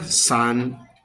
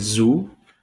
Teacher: S is voiceless, Z is voice. Both are alveolar fricative, made by pushing air between the tongue and alveolar ridge.